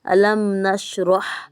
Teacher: میم ساکنہ پہ غنہ نہیں ہوگا بلکہ اظہار ہوگا، اظہار شفوی ہوگا